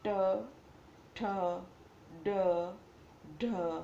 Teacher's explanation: જે વ્યંજનના ઉચ્ચારણ વખતે જીભ વળીને તાળવાને અડે છે તેવા વ્યંજનને મૂર્ધન્ય વ્યંજન કહે છે.